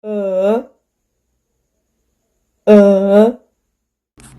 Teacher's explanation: The tongue is in the middle of the mouth and the lips are unrounded. The mouth is slightly open and the sound is long. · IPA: ɜ